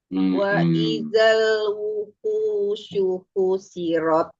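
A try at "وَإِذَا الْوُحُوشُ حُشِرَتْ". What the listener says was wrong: Jelaskan haknya jangan sama dengan hak biasa. Wa idzal wuhusyu husyirat.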